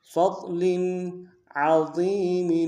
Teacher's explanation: ضاد کے ساتھ ملانا ہے، ضاد کو موٹا ادا کریں گے، لام کی نیچے تنوین ہے لیکن یہاں پہ تھوڑا سا اظہار کریں گے